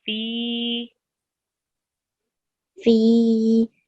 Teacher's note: It's a ya madda. So you have a ya sakin and before it you have a kasra and that just stretches that ya for 2 seconds.